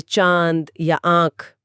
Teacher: अनुनासिक को बोलते समय हवा नाक और मुंह दोनों से एक साथ बाहर आती है